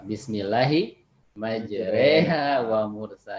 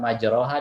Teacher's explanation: ini imalah nih satu-satunya bacaan Quran yang ada e-nya. Karena bahasa Arab kan nggak ada e-nya, adanya a i u o.